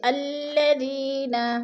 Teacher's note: الذی پہ یا مدہ ہے، یا ساکن سے پہلے دال کے نیچے زیر ہے تو یا مدہ کو ہم نے ایک الف 2 حرکات کے برابر لمبا کر کے پڑھنا ہے